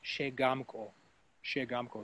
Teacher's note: In this case, we're going to stress the second syllable.